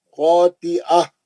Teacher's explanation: پھر تنوین کا اظہار حلقی حرف خا ہے، نہیں غنہ نہیں کرنا